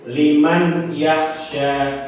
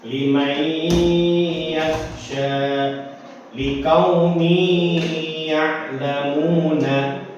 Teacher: karena kita harus menggunakan hukum idgham bi gunnah, yaitu dengung